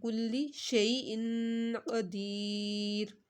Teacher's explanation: قاف کو آپ نے موٹا بھی پڑھنا ہے اور یہاں پر ان پہ گنہ بھی کرنا ہے